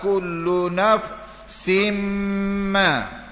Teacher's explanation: Nafsin ma, idgham ma'al ghunah. Tanwin bertemu mim.